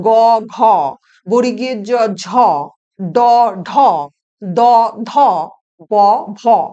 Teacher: সেটা কি না, প্রতি বর্গের তৃতীয় এবং চতুর্থ ধ্বনি উচ্চারণের সময় বাতাসের ধাক্কায় আমাদের কণ্ঠস্থ স্বরতন্ত্রের কম্পন হয় বলে কণ্ঠস্বর গম্ভীর হয়। এই জন্য এই ধ্বনিগুলোকে বলা হয় ঘোষ বর্ণ বা নাদ বর্ণ বা বলা হয় ভয়েসড সাউন্ডস। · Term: ঘোষ ধ্বনি